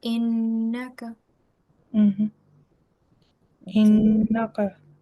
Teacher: And there's also a rule of ghanna, because when you join with this, you have to have a nasal sound for 2 seconds